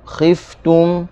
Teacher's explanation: huruf fa, khif, hujung gigi atas dengan bawah yang basah. Lepaskan suara, lepaskan angin.